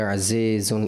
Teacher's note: عزیزن میں جو کسرہ ہے زیر ہے وہ آپ مجھول کر گئے